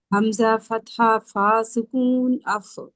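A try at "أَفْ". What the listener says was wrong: अफ अफ नहीं कहना। ये देखें, फा में एक एक क्वालिटी है, रिखावा, यानी ये ज्यादा आवाज चलती है, ठीक है?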